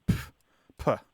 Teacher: What it is it's a spelling version of the sound that you make when you have a sudden disregard for something. So there's this sharp plosive sound that you make when you are reacting dismissively. So you go, like it's a sharp exhalation of air with a P sound at the beginning, like puh.